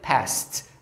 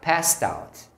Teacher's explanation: você escreve com ED, mas o som final é de um T